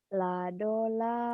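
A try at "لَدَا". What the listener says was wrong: Salah. Yang panjang ujung doang dua-duanya.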